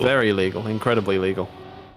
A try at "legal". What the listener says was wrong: It does sound like you're saying illegal sometimes, It's just an accent thing. It's just, It's literally just an accent thing that when you say legal, my brain hears illegal.